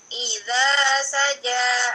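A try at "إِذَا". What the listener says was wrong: Nah, ingat ya, i-nya jangan ditinggikan suaranya. Kalau tinggikan dia panjang.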